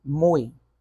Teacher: Por exemplo, em mui, na primeira sílaba, ó, quando vocês viram aí, ó, mui, como vocês podem observar, nesse mui eu tenho uma vogal apenas. E a outra que você acha que é vogal, na verdade, é uma semivogal.